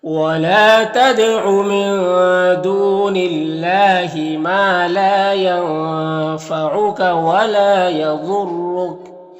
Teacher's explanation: ضاد حروف مستعلیہ میں سے پر پڑھیں گے۔ یہاں پر را مشددہ کے اوپر پیش ہے تو را کو پر پڑھیں گے۔ یہاں پر وقف کریں گے تو کاف کا زبر سکون سے بدل جائے گا، تو اس طرح سے پڑھیں گے۔